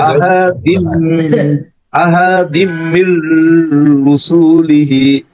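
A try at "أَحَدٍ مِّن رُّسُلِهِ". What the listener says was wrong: হ্যাঁ এইখানেও কিন্তু টান হবে না, মির রসুলিহি। হ্যাঁ আসাদিম এখানে এখানে গুণা হবে। হ্যাঁ এটা দ্রুত হতে আহাদিম, আহাদিমের মধ্যে কিন্তু একটু গুণা করে মাত করতে হবে, কিন্তু একটু পরে মাদ না।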